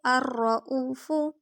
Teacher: الرؤوف، فا کی پیش کو لمبا نہیں کریں گے